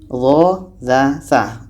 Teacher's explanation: Tempat keluar hurufnya pada ujung lidah, menempel dengan ujung gigi seri atas. Ujung lidah kita ini menempel dengan gigi seri atas.